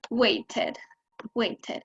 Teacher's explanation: Y los verbos que terminan en de o en te, por ejemplo, el verbo wait, cuando los vamos a poner en pasado, cuando les vamos a agregar ed, esa ed no suena ni como una t ni como una d, sino id, suena id.